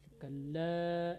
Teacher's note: Kalla, la panjang seharusnya, tadi dipendekkan